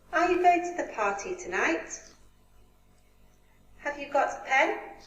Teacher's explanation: We go up. Rising intonation, the speaker's voice rises on the last content word or phrase.